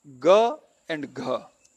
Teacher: the ga does not produce much breath. Gha produces much more.